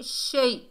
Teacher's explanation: یہ یا لین ہے، نرمی اور جلدی سے ادا کریں گے